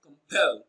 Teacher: Pel receives the stress. It is pronounced louder and longer.